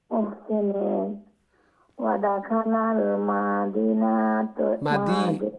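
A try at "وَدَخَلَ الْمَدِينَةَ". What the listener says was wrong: মা শর্ট হবে। আবার ওদাখালাল মাদিনাতা, ওদাখালাল মিম শর্ট, ওদাখালাল মাদিনাতা আলা হিনা গাফলাতিম মিন আহলিহা।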